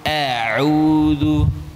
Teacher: Jadi huruf ain terasa di tenggorokan, ya. Terasa menekan a ya.